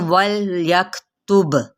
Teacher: لام کو ہلانا نہیں، کاف پہ ہمس کریں گے، با پہ قلقلہ کرتے ہوئے